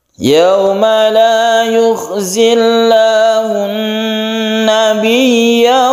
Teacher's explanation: La yukhzillahun, kita tahan ketika membaca hun ini ya, kita tahan. Kemudian nabi ya tasydid ya, ini harus ditekan ya-nya.